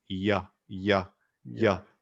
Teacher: which is an english y and uh your mouth kind of arcs and your tongue goes to the top